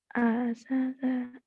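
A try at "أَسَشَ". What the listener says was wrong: Asasya. Anginnya kurang gede ya, susah. Asasya gitu.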